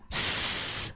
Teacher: mengalir contoh lafalkan saja Misalnya huruf Sin Sin sukun bunyinya Bagaimana suaranya mengalir kan itu rakhah